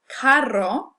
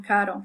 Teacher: when we have a double R, this is called a trill, and that's the famous Spanish R that a lot of people find difficult to pronounce. So, carro, you'll notice, is different from caro.